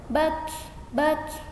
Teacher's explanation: ketika harokatnya sukun maka kita baca dengan hams atau ada angin sedikit yang keluar, bak, bak ya, seperti itu.